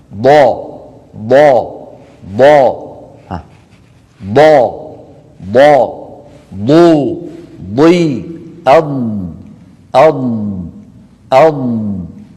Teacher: تخرج من جانب اللسان، يسمونه حافة اللسان، حافة بالفاء المخففة، ولا تقول حافة.